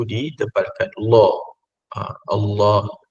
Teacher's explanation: Jadi lam pada lafzul jalalah itu ditebalkan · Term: tafkhim